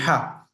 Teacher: the ha sound comes from the middle of the throat